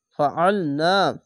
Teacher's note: আইনটিকে গলা চিপে পড়বেন, একটু মোটা করে পড়বেন। ফা ইয়ের ফি, এখানে চিকন চিহ্ন মাদ্দে আরজি, 3 আলিফ টেনে পড়বেন।